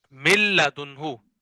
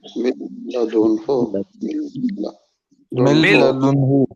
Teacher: نون کی بالکل بھی آواز نہیں آئے گی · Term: ادغام